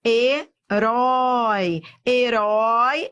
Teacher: herói é um ditongo e decrescente eu fui do Forte pro fraco